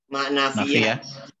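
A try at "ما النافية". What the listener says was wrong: ma'an nafiyah. Jangan malas mengucapkan alif lam ya. Ma'an nafiyah.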